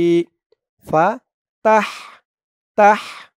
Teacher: এই হার আওয়াজটা গলার ভেতর থেকে চিকুন হয়ে বের হবে।